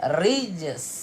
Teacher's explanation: Matikan dengan jim, ada qalqalah sughra, dan matikan dengan huruf sin.